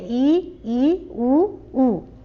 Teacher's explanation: इनके उच्चारण में मुंह लगभग बंद रहता है। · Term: संवृत